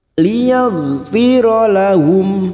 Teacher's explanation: Huruf ghain bukan qolqolah, jangan sampai dipantulkan.